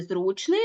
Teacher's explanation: в слові зручний наголошений перший склад тобто наголос може бути на будь-якому складі Ну ось наприклад наголос